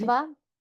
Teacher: It's a d with a r, and then it's a sh in the third mouth position, plus a ta in the third mouth position, plus a va. So this is a three consonant conjunct, and then there's a long a, yeah, with the extra bar.